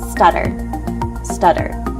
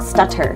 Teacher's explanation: Sounds more like a D, not a T.